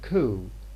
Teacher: lip rounding is imposed on k in code